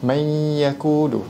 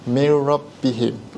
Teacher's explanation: cara bacaannya masukkan nun berserta dengung